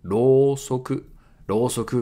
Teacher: so here u after rō makes it a long vowel